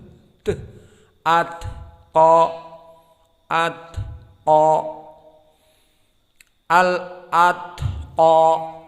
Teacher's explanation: hamsnya tidak ada suara ta, hanya nafas